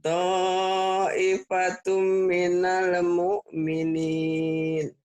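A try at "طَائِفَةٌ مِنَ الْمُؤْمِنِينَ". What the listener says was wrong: Tuh bagus Bu.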